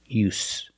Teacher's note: use the true s sound with no vibration use it's no use there's no reason to continue trying to